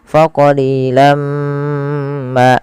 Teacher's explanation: Maka jangan lagi dibaca faqalilan ma, tapi langsung masukkan ke mim karena ia bacaan idgham bi gunnah. Kemudian setelah kita masukkan tanwinnya ke mim ditahan faqalilam ma.